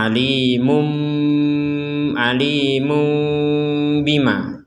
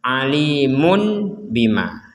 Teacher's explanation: Nah, tapi gunnahnya di sini ada unsur ikhfa'nya. Artinya kita tidak mengetupkan atau menutup seluruh bibir. Tapi kita harus ada yang namanya lubang kecil. Tapi bukan ikhfa juga karena ini adalah tanwin atau domatain ya. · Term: iklab